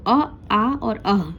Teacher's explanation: अ, आ और अह हमारे कंठ से ध्वनि इसकी निकलती है